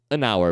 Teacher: Porque o H é mudo. O primeiro som é de vogal, hour.